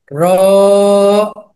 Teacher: জিহ্বার আগার পিঠ তার বরাবর উপরের তালুর সঙ্গে লাগিয়ে